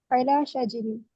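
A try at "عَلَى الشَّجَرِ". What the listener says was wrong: नहीं अलश शजरी, अगर लाम तारीफ वहां लगा है जैसे यहाँ लिखा है तो दोनों गिर जाएगा, अलिफ और लाम, अलश शजरी।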